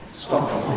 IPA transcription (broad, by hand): ˈstɒp mi